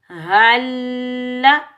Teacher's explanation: इस हा को हम सीने की तरफ वाले हलक से अदा करेंगे। हल्ला, लाम मुशद्दिद को भी हम सख्ती से अदा करेंगे। · हा के ऊपर ज़बर हा को हम लाम मुशद्दिद के साथ मिलाएंगे, बगैर खींचे पढ़ेंगे